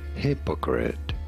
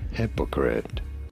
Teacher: You do want to stress on the first syllable.